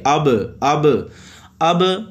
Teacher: یہ دیکھیں حمزہ زبر با اب، آواز لگ کے واپس اوپر کی طرف واپس اٹھتی ہے